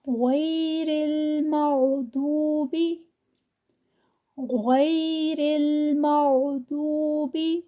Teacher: غین موٹا ہے، پھر ضاد بھی موٹا ہے، اور ان کو موٹا ہی ادا کریں گے